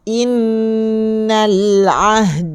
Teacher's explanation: dengung dua harokat sebelum masuk pada huruf nun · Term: wajib dengung